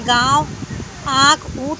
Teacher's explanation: ये वे ध्वनियाँ हैं जिसका उच्चारण में हवा नाक तथा मुख दोनों से बाहर आती है। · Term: अनुनासिक